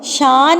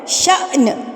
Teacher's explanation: اچھا یہاں پر دیکھیے الف کے اوپر جزم آ گئی ہے، الف کے اوپر سکون کی حالت آ گئی ہے، تو ہم اس کو شان نہیں پڑھیں گے، شان غلط ہے، شأن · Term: جھٹکا